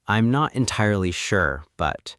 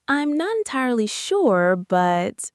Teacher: Notice how my voice lifts slightly on sure and trails off on but. It creates a linguistic bridge. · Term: rising intonation, slight rising intonation